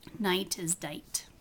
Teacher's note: Other common processes are substitution, like denasalization. Nasals are replaced by oral stops.